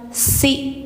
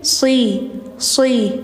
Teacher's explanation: minna sirin si hati-hati bacanya jangan si tipis tapi si sh si tebal lidah dalamnya diangkatin